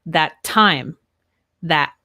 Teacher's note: not say that time i would say that time that right so i don't say the t at the end of that